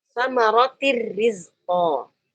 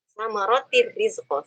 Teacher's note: Nun sukun dimasukkan ke dalam ro, nun sukun dimasukkan ke dalam huruf lam dengan sempurna. Maka kita tidak menyisakan sifat gunnahnya. Langsung murni seperti lam, ro-nya bertasydid. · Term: idgham bila gunnah